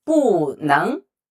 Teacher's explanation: It followed by the second tone character. So the 不 doesn't change.